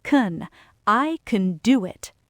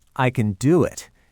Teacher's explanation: So do gets the stress and can gets reduced to awah. It sounds like can.